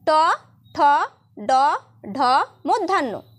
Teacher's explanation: এই ব্যঞ্জন ধ্বনিগুলি উচ্চারণের সময় জীভের অগ্রভাগ উল্টিয়ে মূর্ধায় স্পর্শ করে